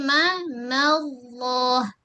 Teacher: Pada mim nipis lafaz Allah tebal · Okay, ma Allah. Pada lam tu tepi ujung lidah sentuh pada gusi gigi atas dan angkat pangkal lidah sebab sebelum lafaz Allah berbaris atas.